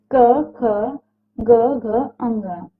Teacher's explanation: इन व्यंजनों के उच्चारण में जीभ का पिछला भाग कोमल तालु को छूता है। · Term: कंठ